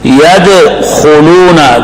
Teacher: يدخلون دال کو ہلانا ہے، دال کے جزم کو قلقلہ کی وجہ سے. خا موٹی ہے استعلاء کی وجہ سے.